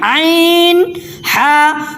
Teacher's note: یہاں پہ دیکھیے آپ کون سا حرف ہے، یہاں پہ عین ہا، تو یہ بھی حروف حلقی میں سے ہے اور ان دونوں کا بھی مخرج ایک ہی ہے، سیم ہے، اور یہ دونوں حرف گلے کے بیچ سے، درمیانی حلق سے گلے کے بیچ سے ادا ہوتا ہے، ان دونوں کا مخرج ایک ہی ہے اور وہ ہے گلے کا بیچ۔